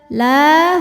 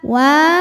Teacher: Maka cara bacanya lam dipanjangkan 2 harokat. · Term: mad tabi'i muqaddar